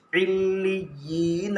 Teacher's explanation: یا مدہ کو ایک الف کے برابر کھینچ کر پڑھے نون کے اوپر زبر ہے زبر کو جلدی پڑھے تھوڑا بھی